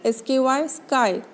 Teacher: The active articulator is the back of the tongue and the passive articulator is the soft palate. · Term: velar